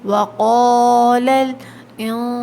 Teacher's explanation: اخفا کریں گے، ناک میں غنّے کو چھپائیں گے۔ سین میں سیٹی کی آواز آتی ہے، سیٹی کی صفت پائی جاتی ہے، دانتوں کو بند کر کے ادا کریں۔